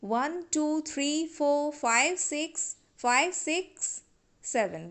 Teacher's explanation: while we pronounce the phone number digits the statement of a number our tone is rising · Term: rising tone